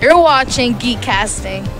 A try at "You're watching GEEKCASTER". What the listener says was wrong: She said GEEKCASTING. You're watching GEEKCASTER.